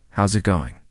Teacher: Instead, "how is it going" becomes "how's it going." The is disappears, and the final G in going often softens. This is called connected speech.